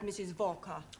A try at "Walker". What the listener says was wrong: Walker. W is pronounced W. Your employer's name is Walker. Walker.